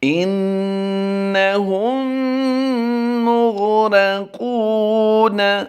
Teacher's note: کیونکہ یہاں پر میم مشدد کو پایا جا رہا ہے، اس لیے یہاں پر غنہ آنے کی آواز ہوگی۔ انہم، آگے میم غین پیش مغ، انہم مغ، را زبر را، انہم مغرا، قاف واو پیش قو، انہم مغرقو، نون زبرنا، انہم مغرقون۔